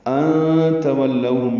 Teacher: نون ساکن کے بعد تا آنے کی وجہ سے اخفا ہے، لو و لین ہے، ہونٹوں کو آگے لائیں گے، نا تمام گول کریں گے، ہم میں میم ساکن پہ اظہار شفوی ہے۔